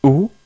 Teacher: Avec dhamma, on prononce OU et non pas O.